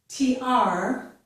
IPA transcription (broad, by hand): tɹ